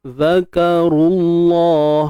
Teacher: Ra tebal sebab ada baris depan.